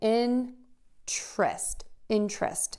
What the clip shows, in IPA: ˈɪntrəst